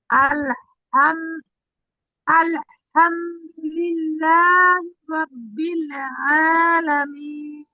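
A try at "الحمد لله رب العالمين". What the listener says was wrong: এই হাটা একটু, হাটা স্পষ্ট কম হচ্ছে। আলহামদুলিল্লাহি রাব্বিল আলামিন।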